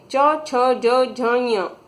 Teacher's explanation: इनका उच्चारण करते वक्त हमारी जीवा कहां टच करती है तालू को